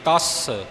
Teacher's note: ਤੱਤੇ ਦੇ ਉੱਪਰ ਅਧਕ ਲਾ ਕੇ ਅਤੇ ਸੱਸੇ ਨੂੰ ਹੋਰ ਭਾਰਾ ਕਰਦਿਆਂ ਹੋਇਆਂ ਅੱਗੇ ਥੋੜ੍ਹੀ ਜਿਹੀ ਐੜੇ ਦੀ ਆਵਾਜ਼ ਆਵੇਗੀ, ਤਸ। ਸੱਸੇ ਨੂੰ ਸਿਹਾਰੀ ਨਹੀਂ ਲੱਗੇਗੀ, ਤਸ।